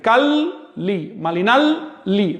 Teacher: la doble L siempre se pronuncia como L larga, nunca como la Y del español